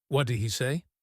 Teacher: The T in what and the D in did are right next to each other. We don't say both. We just make one sound.